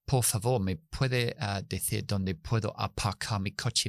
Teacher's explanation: están usando la oclusividad de las consonantes del inglés para hablar castellano